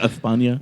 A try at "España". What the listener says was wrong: No, the lisp is only on certain C's and Z's. So it would be España, but it would be like cerveza.